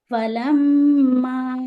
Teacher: میم پر غنہ کریں گے 2 حرکت